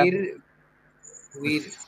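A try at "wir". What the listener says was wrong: না, এটা হচ্ছে ভিয়ার। ডাব্লিউ এর উচ্চারণ হচ্ছে ভে, ডাব্লিউ এর উচ্চারণ হচ্ছে ডয়েসে ভে।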